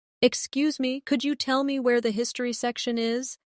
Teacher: In natural speech, could you becomes could ya.